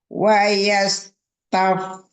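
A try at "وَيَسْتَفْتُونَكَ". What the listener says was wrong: Umi dialirkan dulu sini, tidak wayastaftu, jangan wayastaftu, dialirkan sinnya, ada sofir roghah ya. Wayastaftunaka fin nisa.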